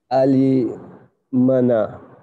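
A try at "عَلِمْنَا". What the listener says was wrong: See, the first sigha, what we'll do, we'll make silent meme. Alimna. Alimna.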